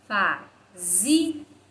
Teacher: A nossa sílaba tônica, a nossa sílaba mais forte é a penúltima, zi, portanto, ela é paroxítona.